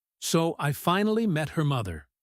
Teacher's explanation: Now, imagine the exact same words, but the voice drops down low at the end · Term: dropping voice